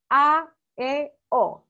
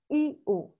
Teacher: la a la e y la o son abiertas cierto porque uno Abre más la boca para pronunciarla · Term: vocales abiertas